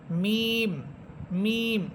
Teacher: দুই ঠোটের শুকন অংশ থেকে মিম মিম দুই ঠোটের শুকন অংশ